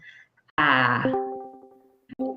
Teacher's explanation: to the bottom of the mouth for the a sound so bring your tongue all the way resting to the bottom so it's a very low tongue position